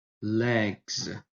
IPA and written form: leɡz (legs)